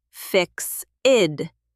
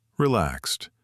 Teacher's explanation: Sometimes the ed sounds like a T, like in your word, fixed.